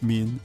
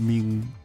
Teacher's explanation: So like the dental instead of the velar nasal.